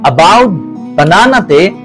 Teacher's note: এই ধ্বনি উচ্চারিত হয় আ এর মত। মানে দুর্বলা যাকে আমরা সোয়া নামে চিনি। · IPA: /ə/